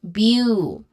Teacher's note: bu which has a long ooh sound